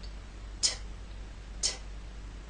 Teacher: the T sound is a quiet sound. It's what's known as an unvoiced consonant, meaning there is no voice. You will feel no vibration when you make the T sound.